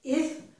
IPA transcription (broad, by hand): ɪ